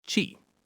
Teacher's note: The second syllable is a very quick and soft chi sound like the beginning of the word chief. It's unstressed. So it's not chi.